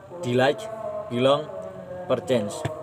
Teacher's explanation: one unstressed syllable followed by one stressed syllable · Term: iem